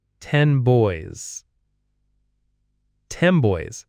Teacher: 10 boys, it sounds like boys. The N sound turns into an M sound. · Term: assimilation